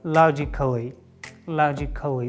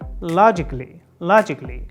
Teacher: whenever you see a before LLY you have to remind yourself that there is no ah there is no ah sound